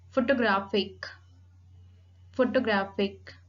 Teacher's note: Primary accent on the third syllable